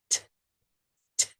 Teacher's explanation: The T sound is also unvoiced. But it doesn't continue. T and the tongue is behind the teeth.